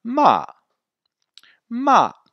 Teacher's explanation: va des extrêmes aiguë et descend vers les extrêmes graves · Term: le quatrième ton, quatrième ton